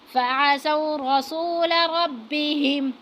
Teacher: را پر جو ہے وہ زبر ہے تو اس کو ہم جو ہے پر کر کے پڑھیں گے۔ فعصوا رسول ربهم، را پر بھی زبر ہے تو اس کو بھی ہم پر کر کے پڑھیں گے۔